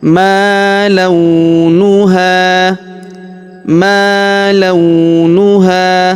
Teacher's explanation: huruf la kita ayun sekali karena wau sukun di depannya.